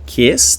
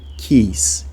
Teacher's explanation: uma diferença de pronúncia entre o I curto de kiss e o I mais longo de keys